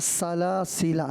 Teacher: دونوں سین کے اندر سیٹی کی آواز آنی چاہیے